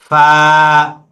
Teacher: নিচে ঠোঁটের পেট সামনের উপরের দুই দাঁতের আগার সঙ্গে লাগিয়ে। এই যে নিচে যে ঠোঁটের নিচে, পেটটা আছে, এই ঠোঁটের পেটটাকে উপরের দুই দাঁত দিয়ে কামড়িয়ে ধরবে এভাবে। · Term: 14 নম্বর মাখরাজ